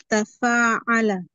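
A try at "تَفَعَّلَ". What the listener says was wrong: bagus.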